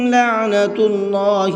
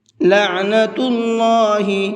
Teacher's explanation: اللہ کے لام کو منہ بھر کے پڑھیں گے، اس لیے کہ اللہ کے لام سے پہلے پیش ہے